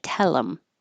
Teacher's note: get rid of the th connect the L and you have tellum